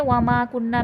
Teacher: आगे देखें, वमा कुन्ना में माँ पे अलिफ मद्दा है, खींच के पढ़ा जाएगा। कुन्ना में नून मुशद्दद है और अलिफ मद्दा है, गुन्ना होकर खींच के पढ़ा जाएगा।